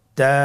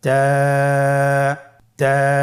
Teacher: জিহ্বার আগা সামনের উপরের 2 দাঁতের গোড়ার সঙ্গে লাগিয়ে উচ্চারিত হয়।